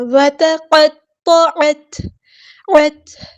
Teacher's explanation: تا میں ہمز کی صفت ہوگی، ہوا سانس جاری رہے گی، ٹھیک ہے، آواز دھیمی ہو جائے گی۔